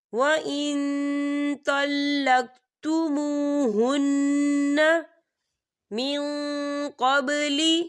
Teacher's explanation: وَإِن طَلَّقْتُمُوهُنَّ، یا دیکھیں وَإِن یہاں نون ساکن ہے اور نون ساکن کے بعد تو آ رہا ہے، اور تو جو ہے اکفا کا ورڈ ہے، تو ہم یہاں اکفا کریں گے، نون ساکن کی آواز کو ناک میں چھپائیں گے